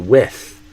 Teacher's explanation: make sure you're saying with with your tongue touching and not your lower lip. Cuz if you do lower lip, you're saying whiff, which is a different word like to catch a whiff of something, a smell, or to whiff when you swing a baseball bat and you miss.